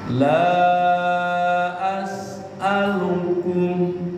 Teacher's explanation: Tadinya dua harakat di depannya ada huruf alif menjadi empat harakat. La empat harakat. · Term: mad jaiz munfasil